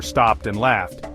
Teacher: In stopped, the /p/ sound is voiceless, and in laughed, the /f/ sound is voiceless, so both take the /t/ sound for the ed ending.